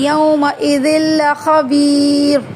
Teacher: یومئذ لام کو کھینچیں گے نہیں